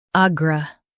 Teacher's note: Stress a and keep r- light